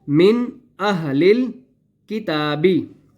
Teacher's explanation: من ویسے کا ویسے ہم نے اس کو من پڑھنا ہے، اس کے اوپر ہم نے غنہ اور اخفا نہیں کرنا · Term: اظہار